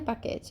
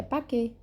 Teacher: Não é paquete, é paquet. A última consoante não é pronunciada em francês.